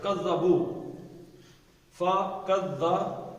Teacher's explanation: شد ہے، زال 2 دفعہ پڑھنی ہے